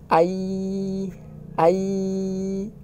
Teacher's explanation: teman-teman bisa merasakan sekarang lidahnya itu terangkat ke langit-langit